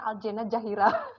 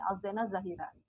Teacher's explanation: kalau di suku Banjar kelihatannya Z itu akan selalu cenderung ke bunyi J